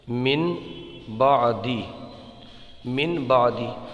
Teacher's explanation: نون ساکن کے ذریعے ہو رہا ہے اقلاب تو نون ساکن کو میم سے بدل دیتے ہیں